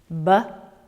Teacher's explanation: Upper and lower lip. B is voiced.